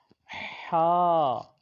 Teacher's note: یہ بالکل حلق کے درمیان سے ادا ہوگا